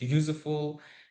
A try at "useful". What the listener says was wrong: Yeah, that useful instead of useful, that Uzbek useful. Uzbek candidates often add this I sound. I.